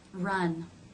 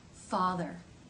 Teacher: the tongue is slightly further back in the final R sound. Because of this further back position, R sounds at the beginning of syllables feel more forward in the face, whereas R sounds at the end of syllables feel further back in the mouth.